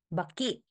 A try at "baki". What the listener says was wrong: Baki. So harder B sound.